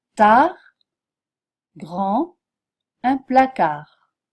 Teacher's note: que le T ne se prononce jamais tard grand un placard on n'entend pas le T le D non plus